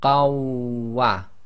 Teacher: So we drop the noon sakin in the fatatain, so we end up with qa, which then is going to join to the waw. So we read the waw as if it's got shadda. So we have qawwa. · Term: assimilation